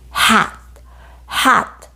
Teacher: 혀와 입을 움직이지 않고 이렇게 목구멍에서 입으로 바람막 이렇게 내보내는 소리예요 목구멍 안쪽에서 나는 소리이고 무음입니다 그죠 목구멍에서 입 밖으로 이렇게 소리만